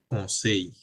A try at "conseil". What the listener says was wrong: না না না, কনসেই, এল সাইলেন্ট। কনসেই, কিছু কিছু ক্ষেত্রে ডিফারেন্ট আছে, এটা আছে তার মধ্যে।